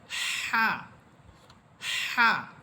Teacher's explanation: বাতাসটাকে একটু চাপাইয়া একটু চাপ দিয়ে বলতে হবে যেন বাতাস যে আমার মুখ থেকে বের হচ্ছে ওই বাতাসেরও একটা শব্দ হয় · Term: জিমের মতো যেই হা